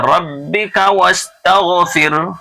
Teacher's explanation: ربک کا کو کھچنا نہیں ہے بلکہ جلدی سے پڑھنا